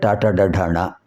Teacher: నాలిక చివరి భాగం ఈ అంగిటి పై భాగంలో స్పృసించడం వల్ల వస్తున్నాయి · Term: మూర్ధన్యములు